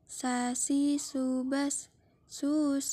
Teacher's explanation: diucapkan dengan menggunakan lidah terdekat hampir di atas dua gigi seri bagian bawah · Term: huruf tsa, huruf sa